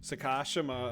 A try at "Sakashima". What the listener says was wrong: It wasn't enough emphasis.